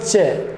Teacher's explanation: मुखावयवों में स्पर्श तो होगा, लेकिन उच्चारण करने पर मुखावयवों में घर्षण भी होगा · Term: स्पर्श संघर्षी व्यंजन